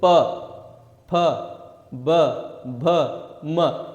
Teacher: Lips आपस में एक दूसरे के साथ टच करते हैं, स्पर्श करते हैं, इसीलिए इनको क्या नाम दे दिया गया, ओष्ठ्य।